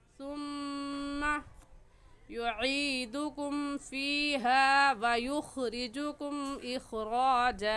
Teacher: सुम्मा में मीम मुशद्दद है और मीम मुशद्दद पर हमेशा गुन्ना होता है, इस वजह से यहाँ पर गुन्ना करके पढ़ेंगे।